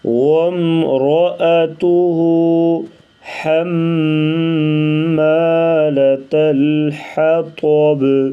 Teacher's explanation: طا کو موٹا کریں گے اور با کے اوپر قلقلہ ہوگا